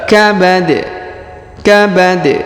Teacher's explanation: dia sukun maka kita pantulkan ya huruf di Kabad Kabad ya tanwinnya menghilang karena sudah kita sukunkan